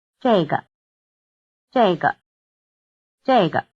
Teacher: the answers 这个 this, 这儿 here, 那个 that, and 那儿 there are all in the falling tone